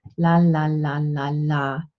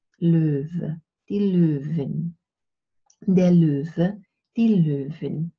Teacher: The tip of the tongue touches the alveolar ridge, and you go la la la la la. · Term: light L